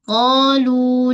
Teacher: Qa dengan lu tempoh yang sama. Sama-sama mad asli. Alif sebelumnya baris atas dan wau sebelumnya baris depan.